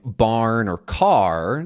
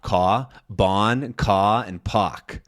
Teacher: a lot of New York accents are non-rhotic, which means that they don't have the sound in most of their words.